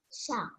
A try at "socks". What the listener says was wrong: Socks. Again. There's S. Socks.